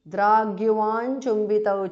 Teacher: द्राक् changes to g because of sandhi